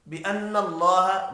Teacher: نون مشدد پر غنہ کریں گے، اللہ کا نام پر پڑھا جائے گا۔